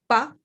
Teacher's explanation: the unaspirated P, pa, this kind of strong, sharp pa sound